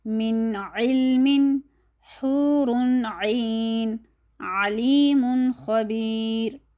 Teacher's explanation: آخر میں ایک بار دوبارہ کہتی جاؤں کہ جب تنوین کے قاعدے کو ہم نے پڑھنا ہوتا ہے، جب نون ساکن اور تنوین کا قاعدہ اظہار میں آ جاتا ہے، تو ہم نون کی آواز کو چھپاتے نہیں ہیں بلکہ ظاہر کرتے ہیں